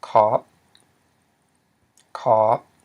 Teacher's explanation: we have low tone, because it's high consonant, plus a long vowel, aw, and then a dead syllable, p, which equals a low tone.